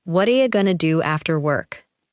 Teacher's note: What are you may sound like what are ya, and going to may sound like gonna. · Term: the sounds have joined together